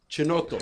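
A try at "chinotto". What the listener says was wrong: Kinoto. Italian, the CH is pronounced like a K. And they don't have a K in the dictionary. I mean, the alphabet.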